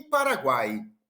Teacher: tritongo, que é a semivogal mais a vogal mais uma semivogal, nesta ordem, como por exemplo em Paraguai.